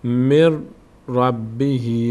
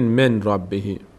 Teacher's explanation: نون تلفظ نمیشه، را تلفظ میشه